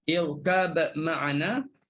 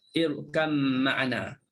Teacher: Sama ada kita nak baca dengan izhar, irkab ma'ana, ataupun kita nak baca dengan idgham, irkam ma'ana.